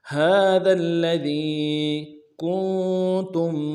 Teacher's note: کاف کو نون ساکن کے ساتھ ملانا ہے، نون ساکن میں غنہ کریں گے، اور تا کو میم ساکن کے ساتھ ملانا ہے، میم ساکن میں غنہ کریں گے۔